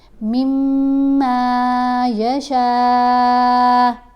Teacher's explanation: شین کے اوپر یہ جو مد ہے اس کو 5 الف کے برابر لمبا پڑھنا ہوتا ہے